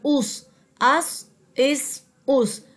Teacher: جیسے کہ آپ کو معلوم ہے کہ صاد کو ہم موٹا کر کے پڑھتے ہیں، اس لیے ہم نے اس کو اس اس اور اس طرح سے ادا کیا۔